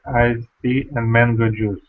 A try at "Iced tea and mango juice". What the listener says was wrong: But You pronounced it very well, but my advice for you, try to join the words and do not make pauses between the words. It will sound more natural English.